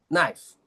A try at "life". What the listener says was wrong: what knife? No, life, not knife. Life, my friend. Knife and life. Knife is the thing that you cut, right? That's knife. This is life.